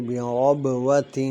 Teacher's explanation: با میں قلقلہ ہوگا اور را جو ہے وہ پور پڑی جائے گی